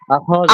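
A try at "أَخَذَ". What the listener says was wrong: আখাযা, আখাযা, আরো তাড়াতাড়ি, আখাযা, খটা খ, খ জবর খ, খ, খতে কোন টান নেই। হামজা খ জাল একটা টানে আখাযা।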